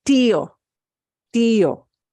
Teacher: we're separating out those two vowels instead of combining them into one distinct one sound where the two slip together exactly and get